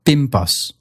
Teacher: an N before a B or a P, consonant made with your lips, that's going to turn into an M, also made with your lips, giving you words like pimpos.